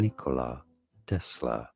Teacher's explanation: more of an emphasis on the first syllable of Nikola